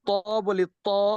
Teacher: ত এর বৈশিষ্ট্য হচ্ছে তাকে তাফকিম অর্থাৎ ভারী করে পড়তে হয়